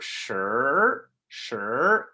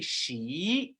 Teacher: again if you say she your tongue is flat she and native speakers of Mandarin their tongue is actually rolled up in an r